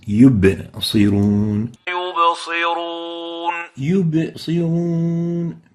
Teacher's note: So ba needs to be having qalqala characteristic, yub, especially when it has the sukoon, it has the still state.